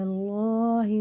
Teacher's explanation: اور اللہ کا لام زبر کے ساتھ ہے تو پورے موٹا کر کے پڑھیں گے